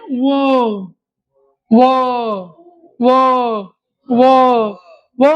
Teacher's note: लागते आण ओटावर परिणाम होतो असा आहे व व म्हणत असतानी दातालाही लागते आणि ओटावर परिणाम होतो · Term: दंतोष्टय, दंतोष्ठय